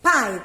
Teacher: Pai, que é uma abrida de boca só, ó. Os dois ficam juntos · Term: semivogal